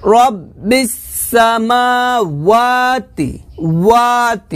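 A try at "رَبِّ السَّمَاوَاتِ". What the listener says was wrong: এখানে কিন্তু রব্বি সামাওয়াতি হবে না ও হবে না হবে ওয়া ওয়া ওয়াও খারাপ যাবে ওয়া ঠোঁটটা গোল করে স্পষ্ট করে উচ্চারণটা নিয়ে আসতে হবে সুন্দর করে রব্বি সামা এভাবে হবে না রব্বি সামা এটা এভাবে হবে না ধীরে ধীরে বলতে হবে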